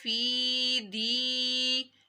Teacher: فی یا ساکن سے پہلے زیر آ رہی تھی تو یا مدہ، فی کو لمبا کیا، فی دی، اسی طرح دی کو بھی لمبا کیا کیونکہ یا ساکن سے پہلے زیر ہے۔